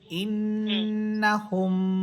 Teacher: হামসা নুন জের ইন নুন জবর না ইন্না হা মিম পেশ হুম ইন্নাহুম হুম যখন বলবেন তখনই গুন্না হবে।